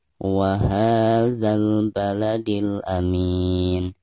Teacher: Wa-ha di sini adalah mad thabi'i, dibaca selama dua harakat.